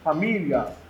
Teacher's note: o I não é bem pronunciado, ele passa muito fraquinho. Por isso nós chamamos de semivogal.